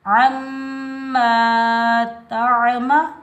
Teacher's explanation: عین کو ہم حلق کے درمیان سے ادا کریں گے. تا کے اوپر زبر، تا کو ہم عین ساکن کے ساتھ ملائیں گے، بغیر کھینچے پڑھیں گے.